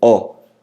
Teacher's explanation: ó a boca se abre uma projeção sonora mais enfática mais alta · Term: ditongo aberto